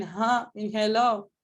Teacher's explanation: not doing anything anywhere here your lips are not doing anything the obstruction in ha in hello is occurring here with your vocal folds okay so it's called a glottal sound it's open there's some